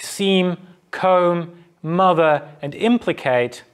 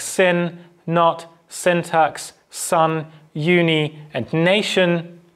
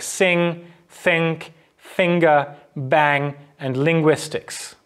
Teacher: the url stops where airflow is stopped at some point except we're opening the velopharyngeal port so now air can escape through the nasal cavity and get out through our nose whilst we hold the closure in the oral cavity so if we closing our lips or we're closing airflow at · nasal stops in english are almost always voiced